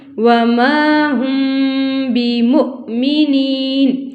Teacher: مد اصلی ہے، وما کو بھی لمبا کرنا ہے، ہم یہاں پہ آواز کو ٹھہرانا ہے، بمؤمنین تو حمزہ کے اوپر جزم ہو تو یہاں پہ چھٹکا ہے، اور یا ساکن سے پہلے زیر ہے تو مد اصلی ہے۔